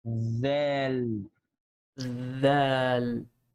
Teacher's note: So simply my tongue is going outside to pronounce the letter and then go inside to continue the name of the letter.